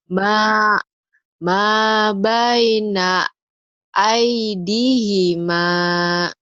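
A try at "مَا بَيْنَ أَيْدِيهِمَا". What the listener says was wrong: Ih-nya pendek. Ayo lagi.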